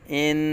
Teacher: نون مشدد میں ہمیشہ غنہ ہوتا ہے